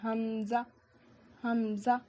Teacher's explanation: حلق کے نیچے والے حصے سے حمزہ ادا ہوتا ہے